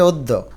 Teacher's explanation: অ টা একটু ওর মত উচ্চারণ হয়। তার মানে অ কে ও দিবে এবং দফলাকে দুইবার উচ্চারণ করবে অদ্য।